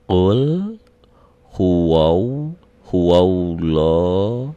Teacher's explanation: a-nya jadi panjang tapi a-nya tidak lagi bunyi a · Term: spesial lafad Allah